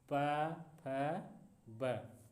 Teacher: ओष्ठ मतलब ओठ से जो बोले जाते हैं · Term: ओष्ठ वर्ग